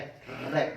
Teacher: ये जिसको बोल देते हैं हमारे दांत से ऊपर मसूड़े होते हैं ना, रे रे। जब इसका रे का उच्चारण करोगे तो कहां पे श्वास टकराएगी, मसूड़ों में। हमारी जीभ कहां टकराएगी, मसूड़ों में। तो इसका कहां से, मसूड़ों से। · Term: दंत मूल